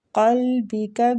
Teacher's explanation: قاف جو ہے نا یہ مستعلیہ حروف ہے، ادھر بھی آپ لوگ دیکھ رہے ہیں کہ یہ پور پڑھا جائے گا